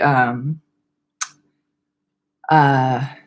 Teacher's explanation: at the end of your sentence your voice goes so low that you can hear like the individual vibrations of your vocal folds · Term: glottal fry